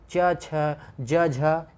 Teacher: हिंदी में इन अक्षरों को स्पर्श संघर्षी व्यंजनों के लिए प्रयोग किया जाता है, जो कि पूर्ण रूप से तालव्य नहीं होता है · तालव्य व्यंजन वो व्यंजन होते हैं जिनके उच्चारण में जीभ के पिछले भाग को तालु से संघर्ष करना पड़ता है।